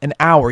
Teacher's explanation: you don't pronounce the h · The only exception to the rule is if you have a silent H, like in the word hour. Now, hour actually starts with an H, but it's silent.